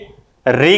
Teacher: जब भी हम री का उच्चारण करते हैं तो हमारी जिह्वा हमारे मूर्धा के पास जाके स्पर्श करती है